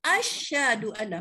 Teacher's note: Mana ada syah, dia mati shin tu.